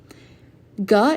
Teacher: a consonant voiced velar stop which means there's a construction of the vocal tract the frontal